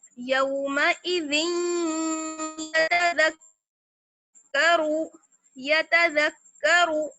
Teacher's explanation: ذال کو جب میں نے یا سے ملایا تب ہلکی سی تنوین کی بھی ساؤنڈ آئی